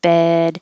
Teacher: e h to make you think e with a d uh a d that you don't have to release unless there's a vowel after it